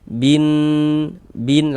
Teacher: Karena cara membaca huruf lam-nya dibaca idgham. Ee jadi cara membacanya itu dari bi langsung masuk ke huruf syamsiyah ke huruf nunnya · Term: idgham syamsiyah